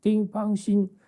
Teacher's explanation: oh, that's all first tones